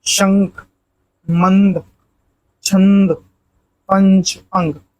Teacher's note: वही अनुनासिक के विपरीत अनुस्वार में अनुस्वार में मुंह से कम और नाक से अधिक ध्वनि